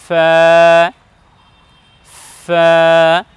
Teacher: নাম হলো এ বর্ণের নাম হলো ফা উচ্চারণ করতে হবে এভাবে সামনের উপরের সম্মুখ ভাগের দুই দাঁত এবং নিচের ঠোঁটের ভেজা অংশ থেকে লাগিয়ে উচ্চারণ করতে হবে